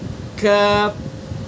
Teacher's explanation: کاف. لکھا ہے زبان کی جڑ سے کچھ اوپر کا حصہ اور اس کے مقابل اوپر کا تالو